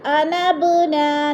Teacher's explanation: با ساکن ہے، حروف قلقلہ میں سے ہے تو ادھر قلقلہ کریں گے یعنی ہلا کر پڑھیں گے